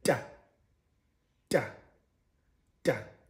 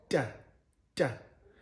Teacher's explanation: So the production of the sound, again, it's central, meaning that the tongue is placed in the front teeth, central, like in the central part of your teeth, which happens to be positioned in front. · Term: ejective dental